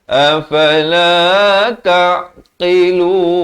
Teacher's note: Ain ni di pertengahan kerongkong